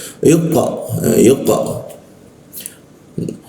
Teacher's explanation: Hembusan udaranya itu terkunci dan pantulannya agak keras sehingga membentuk ke arah O ya. Yq yuq suaranya keluar o tapi mulutnya jangan o. Tetap a ya karena di bahasa Arab itu tidak ada O. A i U tapi keluarnya o ya.